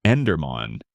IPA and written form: ɛn.dɛʁ.man (Enderman)